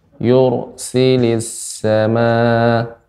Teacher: Yur dibaca dengan ro yang tebal karena ro sukun sebelumnya dhammah